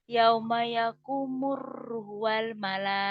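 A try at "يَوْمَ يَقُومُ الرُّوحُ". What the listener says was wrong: Ruhnya panjangin. Yauma yakumur ruhu wal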